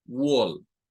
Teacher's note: el sonido de estas a es como una especie de o cortada